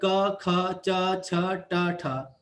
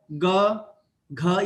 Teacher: स्वर तंत्रियां एक दूसरे से दूर है और बिना घर्षण के ही वायु बाहर आती है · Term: अघोष